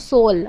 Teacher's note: ચોથી લાક્ષણિકતા જે છે એ ળ નો લ થાય છે